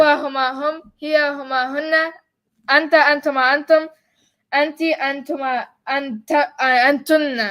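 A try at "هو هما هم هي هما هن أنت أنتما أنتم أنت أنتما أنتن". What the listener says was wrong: Oh, you said antunna twice.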